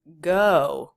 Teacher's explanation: Much longer, especially when you compare it to did.